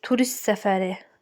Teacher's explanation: Turist səfəri S gəldiyi üçün T düşür